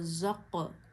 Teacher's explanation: ज़ा में सीटी की आवाज़ आती है और ये जो क़ौफ है ये हमेशा मोटा भी पढ़ा जाता है और जब इस पे जज़म आए तो इसकी आवाज़ लौट के आती है।